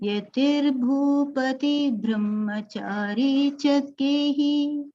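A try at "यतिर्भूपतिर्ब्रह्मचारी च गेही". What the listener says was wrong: Very good, but one R was forgotten.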